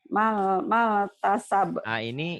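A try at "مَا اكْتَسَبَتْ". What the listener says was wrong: Ini matobi'i jadi pendek. Maktasabat gitu. Maktasabat. Hamas ya Bu ya. Maktasabat. Maktasabat.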